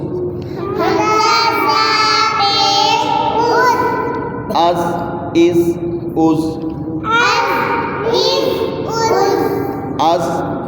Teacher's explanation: اس میں سیٹی تو دیں گے لیکن قلقلہ نہیں کریں گے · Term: زا سیٹی والا